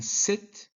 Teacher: s in sit uses the tongue tip near the alveolar ridge